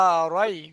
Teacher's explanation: ইয়া সাকিনের ডানদিকে জবার এসছে তাইকে ইয়ালিন বলা হয়। ইয়ালিনকে নরম আওয়াজে তাড়াতাড়ি পড়িতে হয়। টান দেয়া নিষেধ।